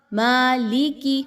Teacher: میم پر کیونکہ کھڑا زبر ہے اس کو 2 حرکات کے برابر لمبا کرنا ہے